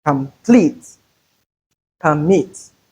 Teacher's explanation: in a weak syllable like complete, we have the schwa sound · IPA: /ə/